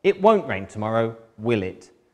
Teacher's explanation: I'm checking with falling intonation. I'm pretty sure it's going to rain but I just want to check with you first.